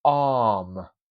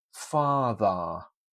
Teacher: the sound is softened to almost an a for example arm it's an elongated a sound the R's gone